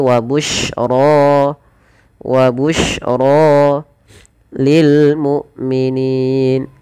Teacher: Kemudian pada lafaz ra dibaca dengan tebal ro-nya, dan ini bukan wabusyroya ya, tidak dibaca wabusyroya, tapi wabusyra lil mu'minin.